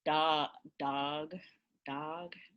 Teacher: it's a low back vowel